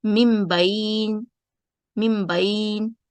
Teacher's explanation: نون ساکین اور تنوین جو ہے اس کی جو بجائے اس کو ہم میم ساکین ادا کریں گے اور پڑھیں گے ممبین.